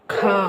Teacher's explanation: ನಾವು ಇಲ್ಲಿ ಉಸಿರನ್ನ ಹೆಚ್ಚು ಕೊಡಬೇಕಾಗುತ್ತೆ ಖಂ ಕ ಗೆ ಅಲ್ಪಪ್ರಾಣ ಕ ಆಗೋಯ್ತು ಆದರೆ ಇಲ್ಲಿ ಖ ಅನ್ಬೇಕಾದ್ರೆ ನಾವು ಹೆಚ್ಚು ಒತ್ತಡ ಕೊಟ್ಟು ಹೇಳ್ಬೇಕಾಗುತ್ತೆ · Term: ಮಹಾಪ್ರಾಣಾಕ್ಷರಗಳು